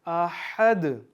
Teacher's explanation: इस हा को आपने हलक से पढ़ना है। दो है ना हा, तो ये जो पहले आता है हा, इसको आपने हलक से पढ़ना है।